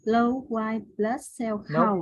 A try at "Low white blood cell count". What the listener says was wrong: See you swallow the T. I want you to hear the white, no T. So I want you to hear the low white blood.